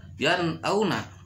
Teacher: nun mati ketemu sama alif atau hamzah, itu dibaca udah jelas idhar. Tidak boleh dibaca yan auna, salah, harus jelas yan auna gitu.